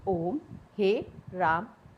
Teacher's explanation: पलुत स्वर जो है इनके उच्चारण में दीर्घ स्वर से भी ज़्यादा समय लगता है, यानी तिगुना टाइम लगता है। ये पलुत स्वर कहलाते हैं, जैसे कि ओम, हे, राम आदि।